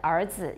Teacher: You can hear the vowel is more like ah than 呃.